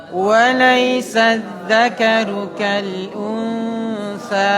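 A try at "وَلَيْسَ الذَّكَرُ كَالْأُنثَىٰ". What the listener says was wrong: Baik, kenapa ditekan di situ? Unsa. Ikhfa, nun sukun bertemu.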